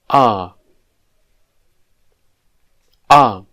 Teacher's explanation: this is an unrounded vowel sound and it is pronounced with the mouth almost completely open